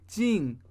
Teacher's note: the master with his regional accent says something more like ding so it's a different tone